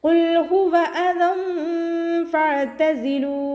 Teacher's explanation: ഖാഫ് ഇസ്തിഅലാൻ്റെ ലെറ്ററാണ്, ഉയർത്തിയിട്ട് ഉച്ചരിക്കണം. നാവിൻ്റെ ബാക്ക് മുകളിലേക്ക് പൊക്കി കൊടുക്കുക കേട്ടോ. ഹ എന്നുള്ള അക്ഷരത്തിൻ്റെ സൗണ്ടിനെ ഹംസയുടെ സൗണ്ടായി പോവാതെ നോക്കുക.